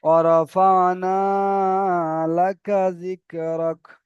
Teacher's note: অরফানা, শুধু নাটা টান হবে আলিফ মাদ্দার জন্য, বাকি সব তাড়াতাড়ি হয়ে যাবে।